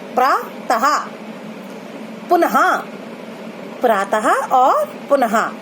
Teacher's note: जो लास्ट में जो हमारी आवाज आ रही है वो हा की आ रही है, और इसी हा की आवाज को हम विसर्ग बोलते हैं।